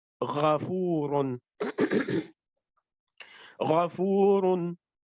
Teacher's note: Ghain and Kha are on the top part of the throat. That's called the Adnal Halq.